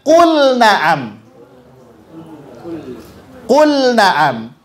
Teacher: maka lam sukunnya mesti dibaca jelas tidak boleh diidamkan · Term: izhar